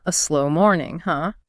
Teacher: My voice went up on huh to show sympathy.